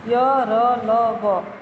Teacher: बिल्कुल आपका मुंह कहीं बंद नहीं हो रहा है, कोई मुंह का पार्ट किसी से टच नहीं हो रहा है। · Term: अंतस्थ व्यंजन